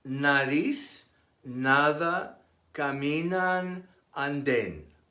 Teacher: It is pronounced similar to English, but with the tip of the tongue against the teeth instead of on the roof of the mouth.